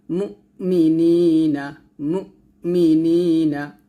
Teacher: হামজাটা একটু ধাক্কা দিয়ে উচ্চারণ করবেন